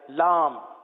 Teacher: لام کی میم جو ہے وہ ہونٹوں کے خشک حصے سے ادا ہوتی ہے، وہ حصہ جو باہر رہتا ہے